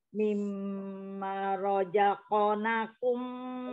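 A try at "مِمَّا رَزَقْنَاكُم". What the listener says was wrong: Banyak dua harkat. Terbaca pendek lagi tadi. Banyak dua harkat.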